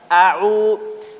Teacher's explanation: Aqsal halq itu di bawah tenggorokan, keluarnya di bawah tenggorokan. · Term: hamzah